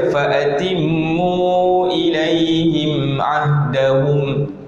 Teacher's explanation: Bila kita baca falatimu ilaihim ahdahum, dia akan ada bunyi tu di hidung. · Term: Mim mati